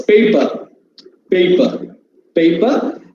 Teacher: the last syllable r is unstressed in english r at the end is always silent